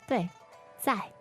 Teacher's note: So 在, that's fourth tone